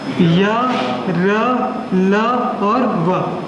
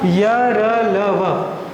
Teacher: फिर हमने देखे अंतःस्थ, अंतःस्थ में देखे कि वे व्यंजन जिनको बोलते समय जीभ मुंह के किसी भी भाग को स्पर्श नहीं करता